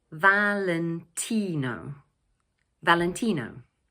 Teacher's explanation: In English, we pronounce it Valentino. So the word is made up of 4 syllables and the third one is stressed,